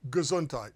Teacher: you're just barely hearing the G and moving into the next syllable of the word gesundheit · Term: schwa